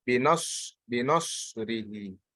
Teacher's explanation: So noon is light, sad is elevated, again the ra is light.